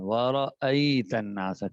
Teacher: اچھا حمزہ اور عین میں تھوڑا فرق ضروری ہے کہ ورأیت الناس، حمزہ کو ایک تو بغیر جھٹکے کے، حمزہ کو جھٹکے کے ساتھ پڑھنا ہے، لیکن اس میں عین کی آواز نہیں آ رہی